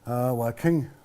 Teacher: So a lot of times we say that the final A is the silent, so it'll be wa ching.